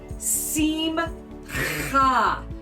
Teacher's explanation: it's got a little guttural there so you get to kind of clear your throat